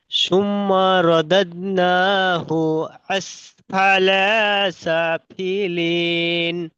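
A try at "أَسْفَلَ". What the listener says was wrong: আসফালা, লাম টান আসফালা, লাম টান হয়ে যাচ্ছে। আসফালা।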